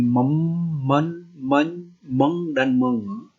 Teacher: Karena udaranya ketika diucapkan itu dihasilkan dengan cara udaranya keluar melalui hidung. Makanya dia disebut nasal. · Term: bunyi nasal